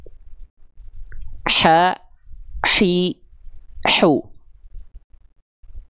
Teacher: Huruf H kecil bersamaan dengan ain dilafalkan dari bagian tengah tenggorokan. Dia memiliki sifat mengalir nafas dengan karakteristik berbisik. Jadi lembut nafasnya.